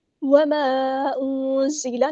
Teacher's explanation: نون ساکن کی آواز کو ہم یہاں پہ چھپا دیں گے، اخفا ہوگا اور ایک الف کے برابر رکیں گے